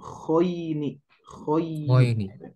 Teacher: Termasuk huruf yang tebal ya. Sehingga nanti bunyinya beda. Yang asalnya biasanya kita tadi baca a, bata, saja. Sekarang jadi kho. Jadi bunyinya o.